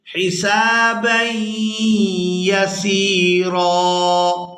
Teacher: یہاں با کو یاء مشدد کے ساتھ ملائیں گے تو غنہ کے ساتھ ادا کریں گے